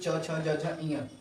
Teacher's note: च वर्ग वाले वण जैसे च छ ज य ये सब तालू से बोले जाते है